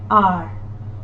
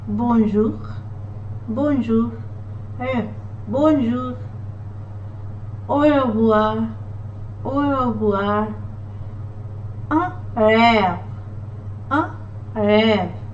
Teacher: All you have to do is just touch your throat from here, and you feel there is a little vibration in your throat when you pronounce this letter R